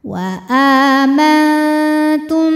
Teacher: Karena mim sukun menghadapi huruf ba, maka mimnya didengungkan dulu, tahan. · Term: ikhfa syafawi